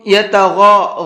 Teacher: غین کو مبھر کے پڑھنا ہے، یتگا نہیں پڑھنا ہے